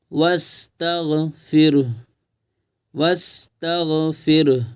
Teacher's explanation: الف نہیں پڑھا جائے گا کیونکہ اگلا حرف پر جزم ہے تو واو کو ڈائریکٹ سین میں ملائیں گے ۔ واستغفر، واستغفر، ہا کی آواز تھوڑی سی آئے گی، وَاسْتَغْفِرْ